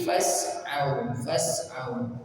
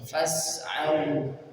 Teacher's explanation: Ada fa masuk ke sin, ada hamzah wasal tapi tidak terbaca dari fa, langsung ke sin. Fas'au, au mat atau sifatnya alin, fas'au.